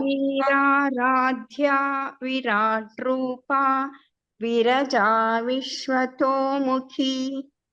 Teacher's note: dha is a Mahaprana in Veeraradhya, and Vishwato Mukhi kha is a Mahaprana